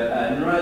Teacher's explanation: It has the n and the r at the same place of articulation